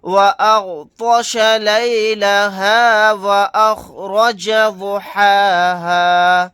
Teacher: را کو یعنی موٹا پڑھیں گے، واد کو بھی موٹا پڑھیں گے